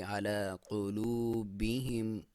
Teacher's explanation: قاف کو موٹا، لام کو باریک، اور یہاں پہ واو مدہ ہے کیونکہ واو سے پہلے پیش ہے تو وہاں پہ آپ ایک الف جتنا لمبا کریں گے